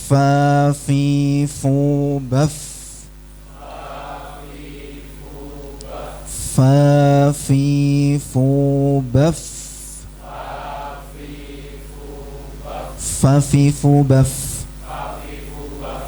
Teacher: Jangan bibir dengan bibir menjadi fa, bukan. Bibir bawah dengan gigi jari atas. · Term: huruf fa